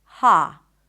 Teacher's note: Some people will pronounce it with an open A sound